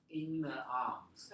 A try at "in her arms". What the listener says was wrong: The only thing I want you to do is not say in her arms, but The only thing that this was very good, but the stress here should be on arms, not on the preposition.